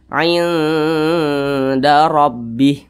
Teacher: Maka bacanya itu disamarkan, didengungkan. Nah, akan tetapi di sini samarnya itu lebih dominan dia. Jadi lebih condong berbunyi n tapi disamarkan. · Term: ikhfa hakiki aqrab